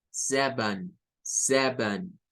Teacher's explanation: la última sílaba es con el schwa y la N.